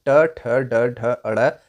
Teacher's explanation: ट वर्ग का उच्चारण स्थान मुर्धा या मुर्धन्य होता है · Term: मुर्धन्य व्यंजन